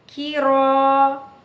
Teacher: सूरत अबसा आयत नंबर 16, काफ ज़ेर की, रो अलिफ ज़बर रो, की रो। काफ को बारीक पढ़ेंगे, रो को पुर पढ़ेंगे क्योंकि रो के ऊपर ज़बर आ गया